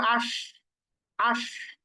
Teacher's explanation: জিহ্বার মাঝখান কিন্তু উপরের তালুর সাথে লাগছে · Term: শিন